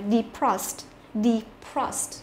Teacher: Ngoại lệ ở cái chỗ là cũng là cái chữ e này cũng nằm ở trong cái tổ hợp là đờ e đấy, nhưng mà e này không đọc là y ngắn mà phải đọc là y dài